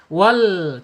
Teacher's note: Inhirab itu condong, dicondongkan ketika dia sukun ya. Wal, condongkan untuk menghindari pantulan ya.